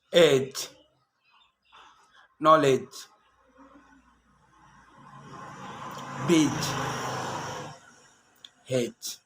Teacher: Wednesday, handsome, sandwich. And a D can be very quiet, not silent, but very quiet in front of a G, like in these examples.